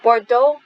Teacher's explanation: Bordeaux, we don't pronounce the consonant at the end.